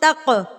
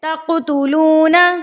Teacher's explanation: انتم ہؤلاء تقتلون، قاف ساکن آ گیا ہے نا یہاں پہ، تو یہاں پر بھی اس کو تق لفظوں کو مارنا ہے اس کے اوپر، یہ قلقلہ ہوگا، ترتراہٹ سے پڑھا جائے گا